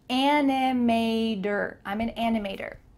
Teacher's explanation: Make sure that the T changes to a D in American English.